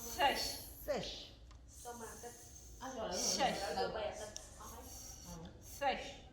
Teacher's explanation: Il y a d'abord le son se et après le son che. Et on met de la langue.